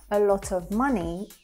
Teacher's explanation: So we don't actually hear the V sound.